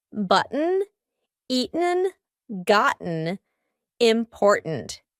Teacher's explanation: my throat is stopping that T sound in the middle of the word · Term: glottal T